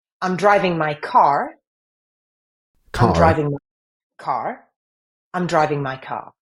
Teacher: it's the bending of the r backwards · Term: retroflex R